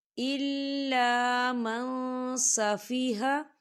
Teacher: ہم نون ساکن کی آواز کو ناک میں چھپائیں گے۔ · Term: اکفا